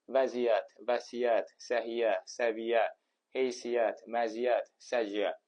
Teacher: Bu sözlərdə qoşa y samit sözün kökündə olmasına baxmayaraq bir y ilə tələffüz edilir. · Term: qoşa y samiti